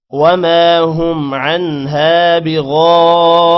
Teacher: غین کو موٹا کریں گے غین کے بعد الف ہے الف پر مد ہے لمبا کریں گے 5 سیکنڈ تقریباً